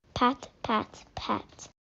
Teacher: The pause, it's a little bit too short. The child is not pausing long enough.